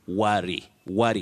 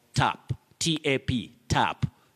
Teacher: that sound ah is a mid central sound and it's different from when somebody talks about tap tap tap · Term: mid central vowel sound